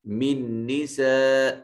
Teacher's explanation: من نساء نون ساکن کے بعد نون مشدد آ گیا، تو نون ساکن کے بعد نون متحرک پہلے نون کا دوسرے نون میں ادغام کر دیا، اسے ادغام مثلین کہا، اور نون مشدد ہے غنہ واجب ہوگا۔